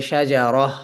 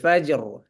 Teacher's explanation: মুনাওয়ান হরফটি সুকুন হচ্ছে থামার কারণে